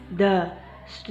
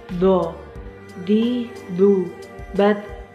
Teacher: Huruf do diucapkan dengan menebalkan suaranya, dengan mengangkat posisi pangkal lidah kita dan lidah bagian depan menutup bagian langit-langit.